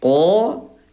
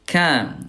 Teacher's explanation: kalau huruf qaf ayah bunda, ini pangkal lidah disentuhkan dengan langit-langit yang lunak. Sementara kalau huruf kaf, pangkal lidahnya disentuhkan dengan langit-langit yang lunak dan keras sekaligus · Huruf qaf ayah bunda jahar tidak ada udara, kalau kaf dia hams ada udara. Ya, qaf tebal, kaf dia tipis.